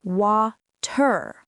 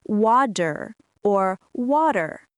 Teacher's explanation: The t sounds like a soft d sound.